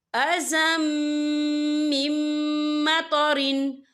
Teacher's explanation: تنوین کے بعد جو ہے میم آ رہا ہے، میم جو ہے حروف یرملون میں سے ہے، تو یہاں پر ادغام ہوگا، تو ہم اسے غنّے کے ساتھ پڑھیں گے۔